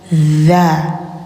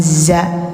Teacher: lidah ujung tempel gigi atas dza bukan za ya.